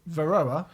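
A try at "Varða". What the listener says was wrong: Well, it's a D, isn't it? It's Varda, isn't it? Varda. It's got a weird thing on it. It's not an umlaut. It's a funny cross thing.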